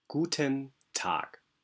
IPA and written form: ˌɡutn̩ ˈtaːk (Guten Tag)